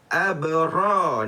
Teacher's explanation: Sebab apa saya kata qalqalah sughra? Sebab qalqalah itu berada di tengah perkataan, maka dia akan terjadi lantunan yang kecil